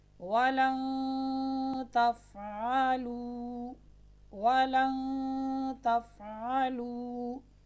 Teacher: نون ساکن اور نون تنوین کے بعد، یہاں پر نون ساکن کے بعد حروف اخفا 15 ہیں، اس میں سے تا آ رہی ہے تو نون ساکن اور نون تنوین میں غنہ ہوگا، ایسے کہ نون ساکن اور نون تنوین کو، یہاں پر نون ساکن کو ہم اس کے مخرج سے پہلے ادا کریں گے اور آواز ناک میں جائے گی۔